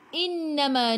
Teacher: Innama nun ada sabdu tekan ke dalam nun dan dengung 2 harakat. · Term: wajib dengung